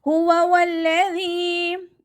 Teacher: ഹ അക്ഷരത്തിൻ്റെ സൗണ്ടിനെ തൊണ്ടയുടെ അവസാന ഭാഗത്തുനിന്ന് കൊണ്ടുവരിക. വാവ് ഉച്ചരിക്കുന്ന സമയത്ത് ചുണ്ടുകളെ സർക്കിൾ ചെയ്ത് പിടിക്കുക കേട്ടോ.